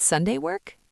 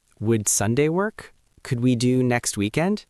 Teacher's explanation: Because it's a friendly question, your voice should rise slightly at the end.